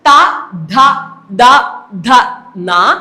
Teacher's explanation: ന പിന്നെ ഏതാ ല സ ഇവയൊക്കെ എന്തിൽ ഉൾപ്പെടുത്താം ദന്ത്യത്തിൽ ഉൾപ്പെടുത്താം അതായത് ഈ അക്ഷരങ്ങൾ ഉച്ചരിക്കപ്പെടുമ്പോൾ നാക്കിന്റെ അഗ്രം എന്ത് ചെയ്യുന്നു പല്ലിൽ മുട്ടുന്നു അതുകൊണ്ടാണ് അവയെ എന്ത് വിളിക്കുന്നത് ദന്ത്യം എന്ന് വിളിക്കുന്നത് അടുത്തത് നോക്കാം ഓഷ്ട്യം അടുത്തത്